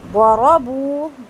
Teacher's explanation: ضاد اور را دونوں کو لمبا نہیں کریں گے، دونوں کو پر کریں گے